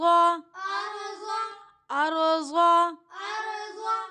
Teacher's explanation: أرض. را یہاں پہ موٹی پڑھی جائے گی کیونکہ را ساکن ہے، اس سے پہلے زبر کی حرکت ہے